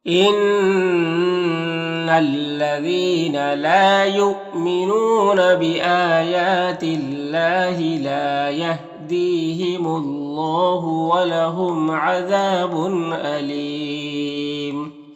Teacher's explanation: تنوین میں اظہار حقیقی ہوگا، تنوین کو ظاہر کر کے جلد پڑھیں گے۔ الف میں وقف کریں گے تو مد عارض وقفی ہوگا تو اس طرح سے پڑھیں گے۔